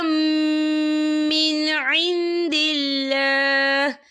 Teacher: یہاں پر اللہ کا نام باریک پڑھا جائے گا کیونکہ اللہ کے نام سے پہلے زیر ہے